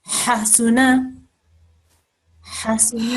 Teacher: Make sure again the ha has to come right from deep in the throat.